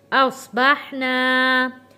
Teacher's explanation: ہم نے اس کو کھینچ کے پڑھا ہے کیونکہ الف ہے، الف سے پہلے زبر ہے، حروف مدہ بن گیا، اس لیے ہم نے اس کو ایک الف کے برابر کھینچ کر پڑھا ہے